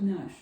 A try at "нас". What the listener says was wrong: Not the SH would be nash.